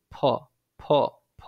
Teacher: ফ বর্ণটা কিন্তু ওষ্ঠধ্বনি, মানে ২ ঠোঁটের মিশ্রণে এটা কিন্তু উচ্চারিত হয়। মানে ২ ঠোঁট আপনি ধরে ফ, ফ, ফ বলছেন।